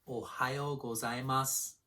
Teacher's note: Also notice that the final vowel sound gets devoiced, meaning that you don't say it as loudly. It's as if this word were written without the U at the end. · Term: devoiced vowel